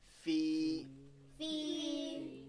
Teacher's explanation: this is a mad asli, so it'll be stretched